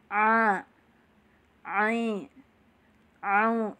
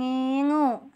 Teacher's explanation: Jadi pengucapan huruf ain yang sempurna harus dialirkan suaranya sampai ke tengah tenggorokan. Jangan cuma di mulut saja, jangan ngingu.